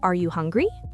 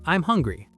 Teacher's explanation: when you ask a question, your voice goes up at the end. Are you hungry? But when you make a statement, it goes down.